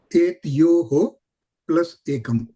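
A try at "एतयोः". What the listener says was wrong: Etayoho. So, should be said full, not etyoho. Etayoho plus ekam.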